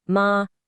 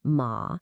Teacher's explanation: change the tone to the third dipping and rising one